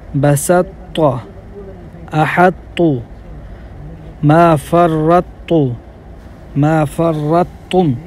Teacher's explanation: اب جو مندرجہ ذیل میں آپ کو کلمات بتانے لگا ہوں، تو کا ادغام تام میں ناقص ہوا ہے، جیسے بسطت، احط، ما فرطت، ما فرطتم، کیونکہ ادغام کے وقت مدغم یعنی طا کی جو صفت استعلاء اور اطباق یہ باقی رہ جاتی ہیں، اس لیے یہ ادغام تام نہیں، ادغام تام ہی ہے بلکہ ناقص نہیں ہوا اس میں۔